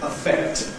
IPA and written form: əˈfekt (affect)